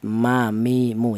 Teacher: Untuk huruf mim tadi sudah, yaitu keluarnya huruf berasal dari kedua bibir yang rapat